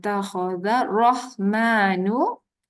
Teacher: tak ada pun bunyi lam. Takhadharrah kalau kita baca penuh. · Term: alif lam syamsiah